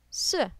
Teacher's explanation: number four S this is a fast falling tone